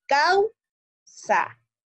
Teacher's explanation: la vocal cerrada no tiene una mayor fuerza de voz, sino que mi mayor fuerza de voz va a estar en la A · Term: diptongo